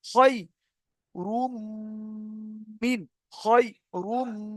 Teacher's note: দেখেছেন আওয়াজটা নাকে উঠছে, নাকটা বন্ধ করে দিলে আর হবে না